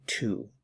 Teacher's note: Notice that the W is silent. We just say two.